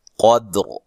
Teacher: قاف کو موٹا، دال کو باریک اور دال پہ قلقلہ کرنا ہے ، تو وقف کی صورت میں را کو موٹا ادا کریں